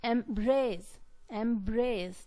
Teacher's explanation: the stress is on the second syllable brace